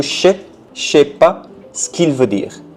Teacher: the first syllable got contracted into je sais pas ce qu'il veut dire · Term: contractions